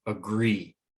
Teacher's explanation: the gree part is more pronounced it's louder it's slower